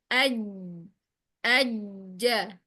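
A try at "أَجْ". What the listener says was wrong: Nah, itu masih ke depan. Ke tengah lagi. Masih terlalu dekat dengan ujung lidah.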